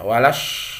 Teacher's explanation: Jadi tapi alif lamnya itu alif lam asyamsiyah atau idgham asyamsiyah ya, walash ya, idgham asyamsiyah, alif lamnya tidak dibaca atau diidghamkan ke shin, itu idgham asyamsiyah.